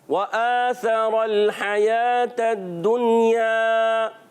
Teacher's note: حمزہ پر کھڑا زبر ہے، ایک الف کھینچنا ہے · واو کی ادائیگی ہونٹوں کی گولائی سے واو پر زبر آ گیا ہے اور بغیر کھینچے ادا کرنا ہے